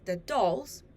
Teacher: happen in a phrase too in a now phrase the dolls the word dolls is stress the word the is unstressed